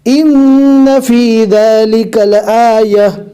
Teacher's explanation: رکنے کی حالت میں جزم والی ہا بنے گی